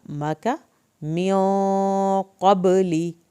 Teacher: मियों पे गुन्ना होगा, देर लगेगी एक अलिफ के बराबर। क़बली, क़ाफ को पुर करना है, बा को हिलाना है, कलकला होगा हा बा का।